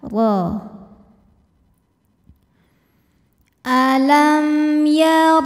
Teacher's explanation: huruf ro dibunyikan secara tafkhim karena ro berharakat fathah cara membacanya adalah ditebalkan yaitu dengan cara menaikkan pangkal lidah kita